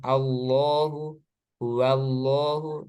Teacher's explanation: Singkatnya, untuk lafaz jalal Allah ketika sebelumnya itu ada fathah atau dhammah, maka lafaz jalal Allah di sini lamnya dibaca tebal.